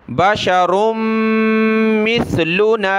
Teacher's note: را کو میم کے ساتھ ملا کر ناک میں آواز پیدا کریں گے, میم کو آگے سا کے ساتھ ملائیں گے.